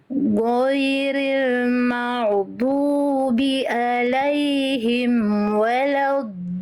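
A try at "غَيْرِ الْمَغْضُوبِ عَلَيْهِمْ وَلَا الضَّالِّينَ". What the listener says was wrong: Du, jangan du. Du, jangan keluar nafas. Du. Du. Waladdo, jangan do. Waladdo. Ghairil maghdubi alaihim waladdo. Jadi enggak du, enggak do. Du, do, enggak. Du, do. Enggak boleh keluar nafas.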